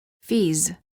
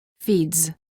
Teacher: The first word contains just a z sound and the second word contains a d and a z sound.